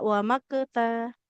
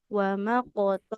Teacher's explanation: Qalqalahnya ditebalkan tidak wqta tapi waqota. Karena dia itu tebal